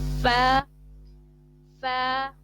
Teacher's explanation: فا جو ہے وہ اوپر کے دانتوں کے کنارے اور نچلے ہونٹ کے تر حصے سے ادا ہوتا ہے